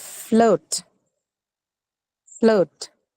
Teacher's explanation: This is a diphthong, the O sound.